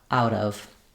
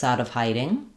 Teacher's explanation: We link the T to the vowel sound. Sounds like a flap.